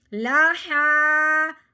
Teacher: ہاں کے لمبا کرنے کے چکر میں لام کو لمبا نہیں کر دینا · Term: کھڑی زبر